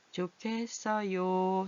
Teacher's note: 히읗은 누구를 만나면 기억을 만나서 어떻게? 기억이 아니라 키읔으로 되죠.